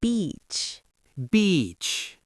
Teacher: the long E takes more time to say. It's literally longer. You have to hold it.